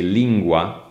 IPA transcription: 'lingwa